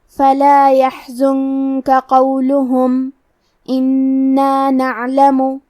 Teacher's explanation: کلمت قولہم میں قاف کی ادائیگی زبان کی جڑ اور تالو کے نرم حصے سے ہے. قاف حروف التفخیم میں سے ہے تو ہم یہ حرف کو موٹی آواز میں پڑھیں گے. حرف اللام پہ اور ہا پہ پیش ہے تو ہمیں یہ دونوں پیش کو برابر سے ادا کرنا ہے.